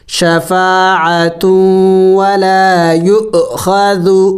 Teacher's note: یا حمزہ پیش یو، شفاعت ولا یو، خا زبر خا، ذال پیش ذو، نرم حروف میں سے ہے، نرم پڑھنا ہے